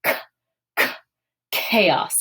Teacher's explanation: this is another one where we, as English speakers, often want to make this a ch sound with that ch, but this is more of a ch in English that we see in like the word chaos, where it's that aspirated c. It's the k sound with the h sound after it. So chaos. If you held your hand in front of your mouth, k, k, chaos.